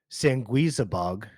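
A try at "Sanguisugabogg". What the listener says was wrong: You're missing a vowel. Sangui Sugabog, dude. It's right there.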